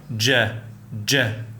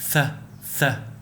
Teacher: jim is considered a voiced sound because your vocal cords vibrate during its pronunciation. Place your hand on your throat and feel the vibration when you pronounce the sound ja, ja, unlike th, th.